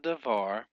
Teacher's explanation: the syllable var is the tonic syllable because it is accented syllable